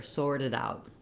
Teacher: And the stress in the phrase falls on out. So sorted are both pretty fast, and then out is a little bit longer. What happens here, when I link a T to the next sound starting with a vowel, it turns into a flap and it sounds a little more like a D.